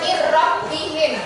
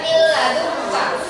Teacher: Nun mati bertemu dengan huruf ro. Nunnya lembur masuk ke ro, tapi tidak dibaca dengung. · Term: bila gunnah